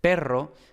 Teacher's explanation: si tú les dices perro con la p normal ellos lo que van a entender es perro con be